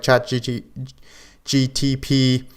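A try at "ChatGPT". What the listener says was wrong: slow down you still said GTP it's GPT GPT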